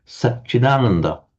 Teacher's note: the T and the Ch becomes a double Ch, and the Chit plus A, the T changes to a D before a vowel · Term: Sandhi